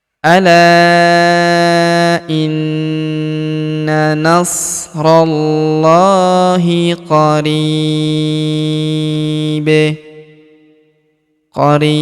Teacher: karena dia sukun maka kita pantulkan atau kita qalqalahkan ya. Karena huruf ba ataupun bun di sini adalah merupakan salah satu daripada huruf-huruf pantul atau huruf-huruf qalqalah.